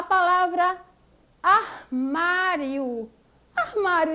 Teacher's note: a sílaba tônica é a penúltima